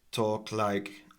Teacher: I think the K is unreleased.